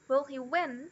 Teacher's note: Mas, em inglês, quando é uma question, quando é uma pergunta que não tem a question word, assim, que é com uma inversão, ela é só crescente.